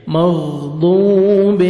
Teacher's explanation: 1 second کھینچیں گے، واو مد ہے، واو جزم سے پہلے پیش ہے ، مغضوب علیہم، عین پڑھیں گے، میم ساکن کا اظہار